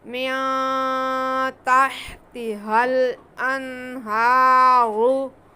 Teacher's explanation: रा पे पेश है, रा को पुर पढ़ेंगे